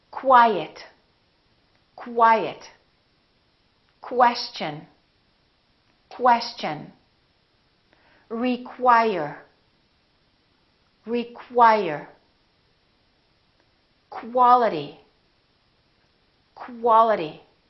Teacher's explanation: words that are spelled with q you they're pronounced as KW so there's a little W sound in here